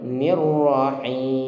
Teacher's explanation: Dan ingat sifat takrir pada ra-nya itu sekali saja getarannya